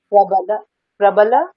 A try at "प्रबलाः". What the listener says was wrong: হ্যাঁ প্রবলাহা, বিসর্গ উচ্চারণ করতে হবে, বিসর্গ